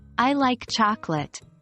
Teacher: and intentions in a conversation for instance saying I like chocolate with a stress on like can subtly express your fondness for chocolate